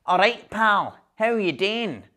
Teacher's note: Glasgow where I'm from there is typically also quite a nasal region of Britain. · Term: nasality of Glasgow